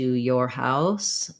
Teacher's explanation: we have basically an or diphthong with a glide before it